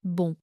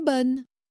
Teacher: Qui est nasal, est bonne. Qui n'est pas nasal, car il est suivi d'une voyelle et on entend le N.